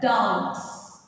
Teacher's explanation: ഇതാണ് നമ്മൾ വരിക. അതായത് ഇത് ഗ എന്നുള്ളത് വോയിസ്ഡ് സൗണ്ട് ആയതുകൊണ്ട് വോയിസ്ഡ് പ്ലൂറൽ ഫോർമേഷൻ സൗണ്ട് ആണ് നമ്മൾ അവിടെ ആഡ് ചെയ്യേണ്ടത്